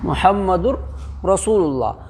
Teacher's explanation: لام اور را کی صورت میں بغیر گنہ کے ملا کر کے پڑھیں گے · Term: ادغام بلا گنہ